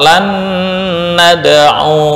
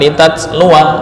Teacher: walaupun ada alif tetap dibaca pendek